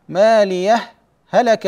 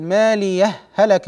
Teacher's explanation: والاظهار يكونوا مع سكته بين الهائين